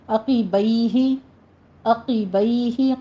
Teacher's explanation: قاف کے نیچے کسرہ ہے، باریک آواز کیجیے